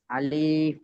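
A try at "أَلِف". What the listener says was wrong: আলিফ বলে টান দেবেন না, এখানে দেখেন ক্রস চিহ্ন আছে, আলিফ বলেন।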